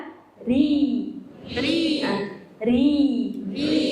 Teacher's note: Dari ujung lidah bertemu dengan gusi atas dekat dengan tempat keluar. Bertemu dengan gusi atas dekat dengan makhraj huruf nun. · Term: makhraj dari huruf ro